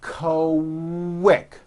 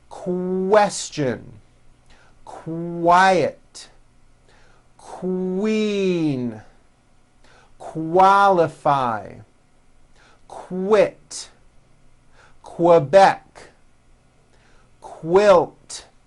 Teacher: Q sounds are made with the K sound, k, k, and the W sound, w, put together.